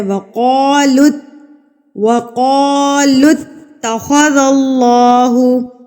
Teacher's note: قا کو پر کر کے پڑھیں گے کیونکہ قاف پر کر کے پڑھا جاتا ہے. وقالوا، وقالوا اتخذ اللہ، تا کے اوپر تشدید ہے تو آپ نے اس کو مضبوطی سے پڑھنا ہے.